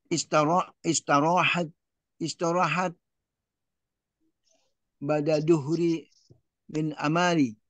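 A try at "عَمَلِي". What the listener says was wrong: Bapak masih tetap aja. Amali, amali. Bukan, mimnya nggak panjang, Pak. Mimnya nggak panjang.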